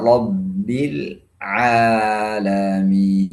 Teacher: ainnya harus jelas, tidak boleh dibaca seperti hamzah. E kemudian lam sukunnya harus jelas, tidak boleh rabbil alamin.